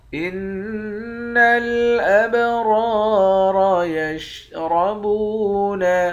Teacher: نون مشدد پر غنہ کریں گے، با پر قلقلہ کریں گے، را کے بعد الف ہے، الف حرف مدہ ہے، ایک الف کے مقدار کھینچ کر پڑھیں گے، دونوں را کو موٹا پڑھیں گے ، اس را کو بھی موٹا پڑھیں گے، با کو واو